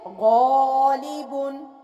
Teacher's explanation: मोटे पढ़े जाने वाले हरूफ में ग़ाइन था और अलिफ मोटा पढ़ा गया